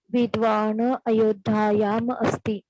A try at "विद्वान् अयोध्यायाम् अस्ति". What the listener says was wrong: याम म पूर्णः न उच्चारयतु